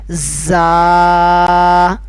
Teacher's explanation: ان 3 حروف زا، سین و صاد کو ادا کرتے وقت سیٹی کی طرح تیز آواز نکالی جاتی ہے۔ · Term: حروف صفیر